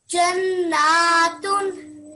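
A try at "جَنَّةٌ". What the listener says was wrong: I need to hear that nasal sound for a bit longer. It should be 2 seconds at least. So Janna, that ghunna sound.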